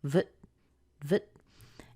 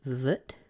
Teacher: You'll notice the T is kind of held. It's like you make the T, but you don't push a lot of air out after it. So vt. And it's going up at the end, so we get vt.